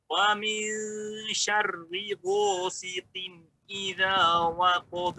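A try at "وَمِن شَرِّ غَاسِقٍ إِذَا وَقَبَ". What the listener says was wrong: Bukan go, Pak ya. Bukan go. Ro, ada getarannya. Ro, au. Kalau Bapak pegang, Bapak sukunkan, Bapak pegang tenggorokan Bapak, maka ada getaran. Au. Dan getarannya ditebalkan. Bukan au. Itu betul tipis. Tapi tipis. Au. Getar. Tapi salah pada sifat isti'la. Karena ro memiliki sifat tebal.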